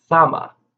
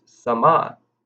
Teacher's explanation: So we emphasize the first syllable. In the participle, it's sama. We emphasize the second syllable.